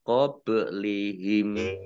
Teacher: Walladzina lamnya dibaca double, ada tasdidnya, dal kasroh ya sukun mat tabi'i, alladzina kata sambung, min qablihim nun sukun bertemu dengan huruf qaf, bacaan ikhfa, dibaca samar-samar. Bak sukun bacaan kolkolah atau memantul, ditampakkan pantulannya qablihim, himnya wakof ya, dan dibaca pendek, tidak ada tanda panjangnya, qablihim.